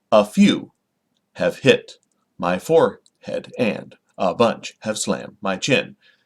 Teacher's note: it's unstressed stressed unstressed stressed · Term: metrical foot